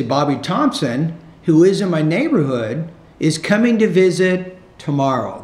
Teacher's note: The thought group that precedes a final thought group, the tone needs to rise a little bit.